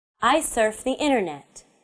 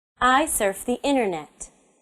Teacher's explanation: My voice goes down at the end of the sentence. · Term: falling intonation